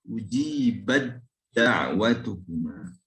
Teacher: huruf ta ini harus dimasukkan huruf dal setelahnya, artinya ta-nya berubah menjadi dal.